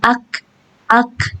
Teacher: Keluarkan aja anginnya, bukan dikeluarkan suaranya, bukan ak gitu.